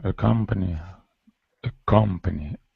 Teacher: The second syllable is accented.